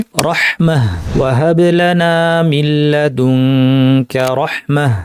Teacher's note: গোলতায়ের পরিবর্তে হা সাকিন পরে আমরা থামবো। এক্ষেত্রে এই গোলতায়ের সাথে জবর আছে না জের আছে না পেশ আছে, নাকি দুই জবর আছে না দুই জের আছে না দুই পেশ আছে, পসিবল সব হরকতগুলো বললাম, এর কোনো কিছু আমাদেরকে দেখতে হবে না।